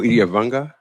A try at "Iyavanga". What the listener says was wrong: And just so you know, it's Iyavanga. The G is silent.